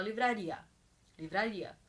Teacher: o som do ar é mais perceptível mais forte do que o som do I nessa palavra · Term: ditongo